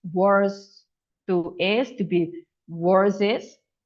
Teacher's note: You need to drag the sound from worse to is